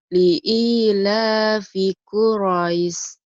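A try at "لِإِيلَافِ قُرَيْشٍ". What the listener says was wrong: Liila fi Quraisy. Sininya gede kan? Quraisy.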